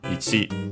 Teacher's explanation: technically would be the accent on the chi, so on the last syllable. Sometimes you might hear it as ich, because of the rule of I and U barely heard if at all.